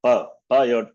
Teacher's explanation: there is clear contact of the upper lip and the lower lip